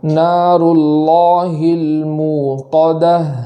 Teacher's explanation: بعض مقام پر ایسا سننے میں آتا ہے کہ وہاں جھٹکا کرتے ہیں، موقدہ پڑھتے ہیں، تو ایسا نہیں پڑھنا بلکہ ایک الف کے برابر واو مدہ کرنا ہے اور جھٹکا نہیں کرنا۔ اور آخر میں جو گول تا ہوتی ہے اس کو وقف میں ہم ہا سے بدلتے ہیں، تو جب وقف کریں گے تو ہا خوب واضح ہو، اس طریقے سے نار اللہ الموقدہ اس طریقے سے پڑھیں گے۔